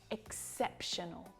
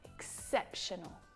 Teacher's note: Notice where the stress is there on the second syllable.